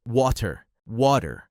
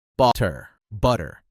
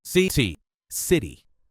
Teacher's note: your tongue touches the roof of your mouth very quickly, but you don't fully pronounce the T. That's what gives it the soft D sound. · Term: flap T